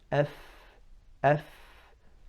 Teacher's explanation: So if I'm reading the fa, I say F, F. I'm just going to the makhraj of the fa. I'm not moving my jaw towards a fatha or a dhamma or a kasra. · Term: sukoon